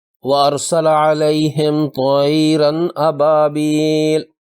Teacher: اس میں طائرن کی زبر کی تنوین کے بعد زبر والی حمزہ آئی ہے، تنوین کے نون کی آواز کو ظاہر کر کے پڑھیں گے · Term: اظہار